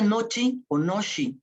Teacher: la palatalización de la E, que se convierte en I, se cierra un grado por la influencia de una consonante palatal